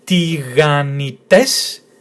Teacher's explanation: So tiganites, because the syllable, the tone is in the last syllable.